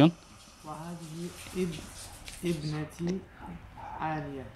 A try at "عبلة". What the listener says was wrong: عب is عب try again No, look at the name, you said عالية